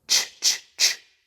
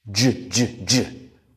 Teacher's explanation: It's just like ch in our mouth. The only difference is in our throat. We add our voice. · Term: j sound